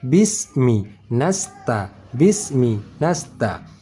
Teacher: Sama desis angin saat kita baca bis dengan nas, sama-sama desis anginnya tipis.